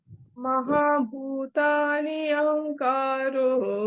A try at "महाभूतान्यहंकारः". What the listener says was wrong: अब नहीं, अहंकार रह, महाभूतान्यहंकारः। नहीं है ना, वो न्य है । महाभूतान्य, ठीक है।